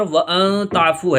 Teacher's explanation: اخفا ہوگا کیونکہ نون ساکن کے بعد اخفا کے 15 حروف میں سے تا آیا ہوا ہے